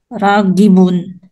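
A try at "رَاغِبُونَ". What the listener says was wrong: Kailangan mayroong prolong doon kasi mad po yan na ragibun.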